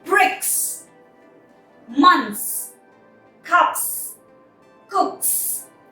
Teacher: form doesn't carry a vibration as well bricks months cups cooks no vibration at all so the plurals have no vibration as well